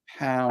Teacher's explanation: it almost comes through your nose because the end's quite nasal